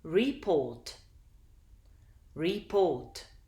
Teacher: can you hear that the second syllable is more prominent than the first this means that the stress is on the second syllable and